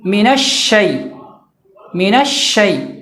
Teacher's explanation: بیچ زبان کو اوپر کے تالو میں جب ہم لگائیں گے تو شین ادا ہو جائے گا